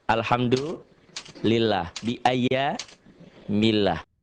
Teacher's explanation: Lafaz Allah dibaca tipis berbunyi A, karena sebelumnya berbaris di bawah atau kasroh.